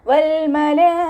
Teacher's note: വ ഉച്ചരിക്കുന്ന സമയത്ത് ചുണ്ടുകളെ വട്ടത്തിൽ പിടിച്ചു കൊടുക്കുക ലാമിന് ഹാഫ് സുക്കൂന് കൊടുക്കാൻ ശ്രദ്ധിക്കുക ലാമിന്റെ കൂടെയുള്ള ലാമിന്റെ കൂടെ മദ്് വന്നു